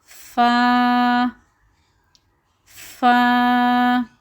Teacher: ہمارے جو دانت ہیں سامنے کی ان کا جو کنارہ ہے وہ جب ہمارے نیچے والے ہونٹ کے اوپر لگے گا اور ہوا باہر کی طرف نکلے گی فا تو یہ لفظ ادا کیا جائے گا.